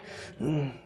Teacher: It can either be silent, or what I would call a very short E. It's barely a sound at all. It's just a little eh.